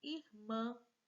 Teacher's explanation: Última sílaba é a sílaba tônica, então ela é oxítona.